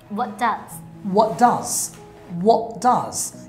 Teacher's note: So, T er pore, jodi, poroborti word er prothom okkhota D thake, tale prothom je T ta, eti bad hoye jay. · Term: elision